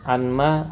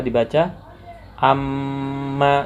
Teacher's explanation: anma nun sukun dengan mim, anma awalnya, maka dibaca amma, seperti mim itu ditasdidkan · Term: idgham bi gunnah